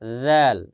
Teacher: জিহ্বার আগা সামনের উপরে দুই দাতের আগার সঙ্গে লাগাইছে